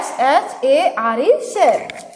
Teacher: एस और एच मिल करके श उच्चारण यानी तालव्य श बना रहा है